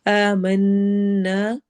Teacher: آمنا، آ الف مدہ ہے، من نون پہ غنہ آ رہا ہے